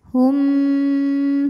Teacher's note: Wa arjuluhum, kemudian ada hukum idgham mimi karena mim sukun menghadapi huruf mim, maka mim pertama dileburkan ke mim kedua disertai bunyi dengungan